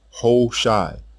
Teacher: This tells us the initial Ha in this name was almost silent because of the stress on the long O vowel in the opening syllable. A long I vowel was heard at the end of the name.